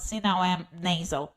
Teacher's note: I can drop my soft palate. See, now I'm nasal.